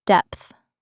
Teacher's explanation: It ends with a th sound. Your tongue touches the back of your top teeth.